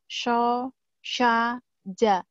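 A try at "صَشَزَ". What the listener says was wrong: So sya za. Za ya, bukan ja.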